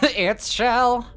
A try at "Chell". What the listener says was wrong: Chell, not Shell, you impudent fool. It's Chell. C H E L L.